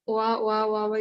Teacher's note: you say it really quickly, you start hearing Va. The sound of this combined vowel is va. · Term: double vowel